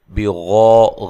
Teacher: غین کو موٹا اور ساتھ الف بھی موٹا ہوگا اور یہ الف مدہ ہے